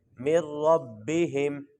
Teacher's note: میم کو نون کے ساتھ نہیں ملائیں گے، میم کو را کے ساتھ ملائیں گے.